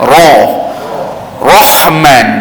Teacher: kita sebut yang berat ro muncung muncung habis mulut tu jadi bulatlah